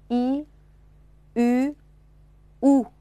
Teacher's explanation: i▁是扁唇音，u▁和▁u▁是圆唇音啊 。大家注意口型的变化啊。这是大写字母▁i▁啊，i。u▁这个字母，u、